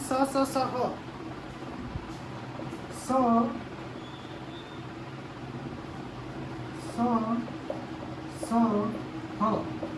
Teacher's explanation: उष्म व्यंजन स, स, स, ह इन वर्णों का उच्चारण और उच्चारण स्थान के साथ प्रवास, वायु और मुख से निकलने वाली सांस के घर्षण से होता है